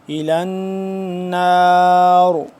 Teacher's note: جب وقف کریں گے تو یہاں پہ را کو پر کر کے پڑھیں گے اور آخر میں وقف ہو جائے گا.